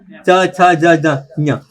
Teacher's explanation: च छ तो बिना उसके उच्चारण होगा ही नहीं। जब भी आप च का उच्चारण करोगे तो आपकी जीभ दांत के बाद ही लगेगी। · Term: तालु